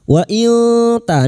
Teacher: Wa ilta nun sukun bertemu ta ikfa hakiki, kita samarkan bunyi nun sukun dan mendengung selama 3 harakat